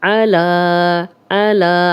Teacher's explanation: ربی اعنی ربی اعنی علی عین کی زبر کو لمبا ہونے سے بچائیں گے، اور لام پہ کھڑا زبر ہے تو اس کو 2 حرکات ہم لمبا کریں گے، اور یا پڑھنے میں نہیں آئے گی۔